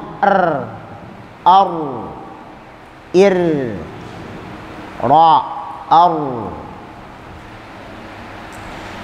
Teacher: Nah, kalau ra harus ditakrir sesuai dengan sifat hurufnya. Sifat huruf ra takrir dengan pengulangan